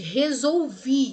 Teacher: O L não tem o som de lê, tem o som de U. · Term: ditongo decrescente